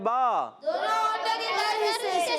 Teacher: बा अदा होता है दोनों होठों के तर हिस्से से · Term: मखरज